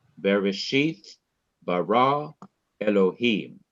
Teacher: in each of these three words in the beginning of the bible the last syllable of each word is to be stressed